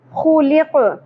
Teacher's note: خُلِقَ قاف ساکن ہو جائے گا آیت مکمل ہونے کی صورت میں. خو کو ہم پر پڑھیں گے, خراش بھی ہوگی, کھردرا پن ہوگا. خُلِقَ قاف پر ادا کرنا ہے, خُلِقَ.